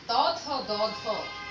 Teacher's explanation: জিহ্বার অগ্রভাগটা আমাদের দাঁতের একদম গোড়া যেটা আছে ওই অংশটা শুধুমাত্র আমরা স্পর্শ করি। এটাকে দন্ত প্রধান ধ্বনি এগুলোকে বলা হয়। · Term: দন্ত বর্ণ